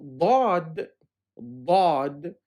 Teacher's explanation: sounds really close to the letter d in english but much much thicker and a deeper sounding